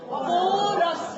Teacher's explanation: 뒤에 모음하고 연음이 될 때는 그저 없어진 R이 다시 생기는 거예요. 왜냐하면 R이란 거 자체가 발음될 때가 모음 앞에 오면 아까 발음된다고 했죠?